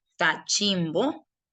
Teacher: Usted diría que la sílaba que más suena es la sílaba chin. Y como esa sílaba es la que lleva la mayor fuerza de voz, entonces a esa sílaba, que es la sílaba chin, le vas a llamar la sílaba tónica.